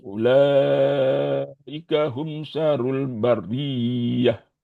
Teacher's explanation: Bariyah. Jadi tasydidnya di atas ya, bukan di atas ro. Bariyah yang ditekan di atas ya.